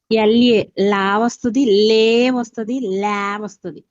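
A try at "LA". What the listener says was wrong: Very good.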